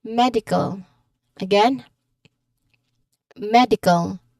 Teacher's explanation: where do we hear the stress? On the first syllable med. That's because of the suffix eal. · In medical, there are only three syllables, so we stress the first.